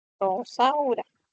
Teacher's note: tienes tu vibrante múltiple y tienes tu vibrante simple